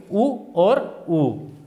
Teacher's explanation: ओष्ठ्य स्वर, जिन स्वरों के उच्चारण में ओष्ठ काम में लिए जाते हों, जैसे उ के अंदर जीभ जैसे है वैसे रहती है लेकिन होठ क्रियाशील हो जाते हैं